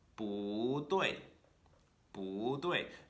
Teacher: However, if that second word is itself a fourth tone, we're not going to have two fourth tones in a row, that 不 in the front of it is going to turn into a second tone, kind of rising up to meet where that fourth tone starts